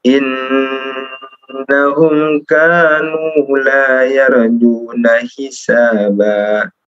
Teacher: Kanu kannya panjang ya. ya, kanu nunnya juga panjang. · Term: kanu panjang